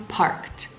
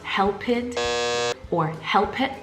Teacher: we must be careful not to pronounce that extra ed as an extra syllable. There's no id sound. It's simply T, okay? A T sound.